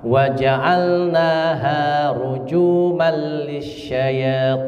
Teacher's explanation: na dan ha panjangnya sama.